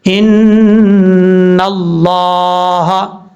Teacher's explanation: نون کے اوپر شد ہے, غنہ کریں گے ایک الف کی مقدار